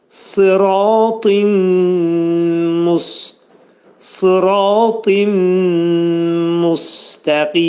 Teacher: Yəni, burada tində olan nun səsi dəyir burada müstəqimdəki olan demək mimə və olur idğam mə'al gunnə. Nun hərfi mim hərfinə çevrilir.